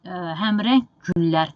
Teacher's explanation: İndi burada yenə həmrəng güllər, deməli, özündən sonra kar samit, daha doğrusu özündən sonra samit gəldiyinə görə bu G-nın tələffüzü olacaq Q kimi